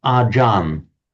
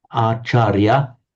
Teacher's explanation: So in Thai, what they do, they often drop off the final syllable, so it becomes achar. If a Thai word ends in a r, that morphs into an n, and an intervocalic ch becomes a j. That's how it doesn't look like it on the face of it, but acharya, in Sanskrit acharya, in Pali acharya, becomes ajan in the Thai pronunciation.